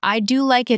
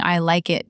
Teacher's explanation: I do like it is clearer than shouting I like it because the stress falls on the helper. The helper does the job.